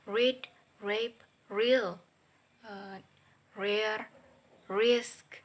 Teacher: voice palato-alveolar approximate sound ra